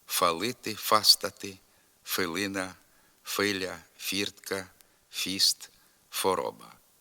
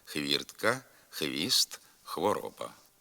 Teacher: зворотне явище усталене звукосполучення хв вимовляється як один звук ф фалити фастати филина Филя Фіртка фіст фороба така вимова також є